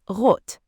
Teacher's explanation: In normal German speech, it is usually just one short tap at the back, not a long rot.